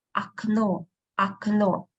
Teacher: Two letters O. But only the last one is stressed. That's why the first one we pronounce as A, окно, окно.